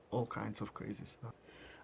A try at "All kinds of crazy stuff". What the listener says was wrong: Is shift the emphasis from all to kinds.